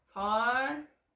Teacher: 설날은 날의 니은이 앞에 오는 리을의 영향을 받아서 리을로 바뀌게 됩니다. 그 결과 설날로 발음이 되는 거였죠. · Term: 유음화